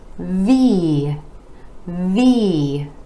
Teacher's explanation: V again that e vowel sound coming after the consonant where the top teeth are connecting with the bottom lip our vocal cords are engaging for the voiced v